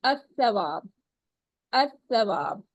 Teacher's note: ملاتے وقت زبان کی نوک کو جلدی حرکت دینی پڑتی ہے، کیونکہ لام اور تا کا مخرج ایک ہی ہے، یعنی زبان کی نوک۔ تو آسانی کے لیے لام کو ہم قربان کر دیتے ہیں اور تا کے اوپر تشدید لگا دی جاتی ہے، ٹھیک ہے۔